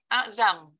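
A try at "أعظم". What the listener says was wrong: Bukan azam. Betulkan zo. Betulkan huruf zo sebutan.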